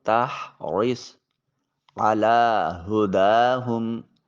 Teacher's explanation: لام کے اوپر کھڑی زبر ہے، الف المدیہ الصغیرہ اس کا نام ہے، ایک الف کے قیم مقام اس کو لمبا کریں گے